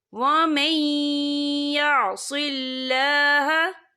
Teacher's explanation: नून साकिन के बाद जो है या आ रहा है, और या जो है रूफ़े और मलून में से है, तो यहाँ पर इदगाम होगा। तो हम इसे थोड़ा सा गुन्ने के साथ पढ़ेंगे।